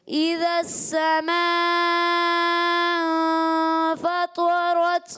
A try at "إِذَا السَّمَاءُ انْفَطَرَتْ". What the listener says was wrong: जब आप करते हैं ना तो होंठ गोल नहीं करते आपकी आवाज़ आ रही तो ऐसे लगता है कि जैसे हमज़ा पर ज़बर है ज़बर नहीं पेश है करना है हुन्ने में भी जैसे इन ठीक है ये आवाज़ है ठीक कोशिश कीजिएगा وإذا البحار فجرت